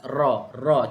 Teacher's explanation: Cuba anda sebut ra. Cuma ra ni dia ada satu sifat sifat special. Dia ada sedikit getaran. · Ra, hujung lidah akan sentuh gusi sebelah atas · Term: huruf ro